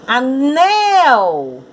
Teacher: A sílaba tônica é nel.